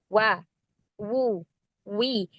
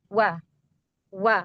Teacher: Syafatain dam. Jadi mengumpulkan kedua bibir. Artinya dua bibir kita mecucu maju gitu ya. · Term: huruf wau